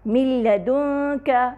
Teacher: نون ساکنہ لام سے مرج ہو رہا ہے، یہاں پر لام سے مدغم ہو رہا ہے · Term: ادغام